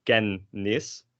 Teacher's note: these two N's kind of coalesce into one N sound